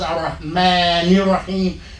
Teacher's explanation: So we drop the vowel on the Rahim, on the Ar-Rahim, and use the vowel up at the end of Rahman.